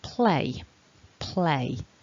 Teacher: you should have some movement in your mouth when you're making that a vowel um if you try and keep the mouth stationary you'll just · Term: double vowel sound